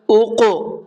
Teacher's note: قاف کے اندر قلقلہ کریں گے، قاف کی آواز کو ڈبل کر کے پڑھیں گے۔